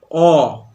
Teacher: জিভটা অনেকটা পিছন দিকে সরে গেছে। ও আগের থেকে পিছন দিকে সরে গেছে। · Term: পশ্চাৎ স্বরধ্বনি